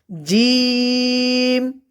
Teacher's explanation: চলুন আগে আমরা সর্বপ্রথম জিমের নিয়মটা জেনে নেই। জিম পড়তে হবে জিহ্বার মধ্যখান তার বরাবর উপরের তালুর সঙ্গে লাগাইয়া জিম